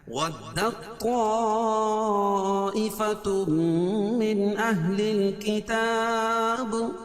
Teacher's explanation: تا کا طا میں ادغام ہو رہا ہے، تا کا طا میں